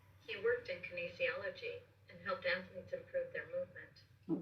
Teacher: we see that slight rise at the end of that thought, but it's telling us we're not finished yet